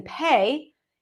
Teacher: the aspirated P as in pay